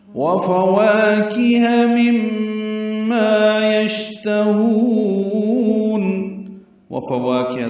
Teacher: واو کو الف مدہ ہے، کاف اور ہا کو جلدی پڑھیں گے